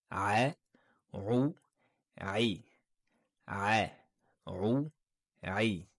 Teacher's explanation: la lettre Rain se prononce au milieu de la gorge, l'épiglotte est dirigée vers l'arrière de la gorge et c'est une lettre amincie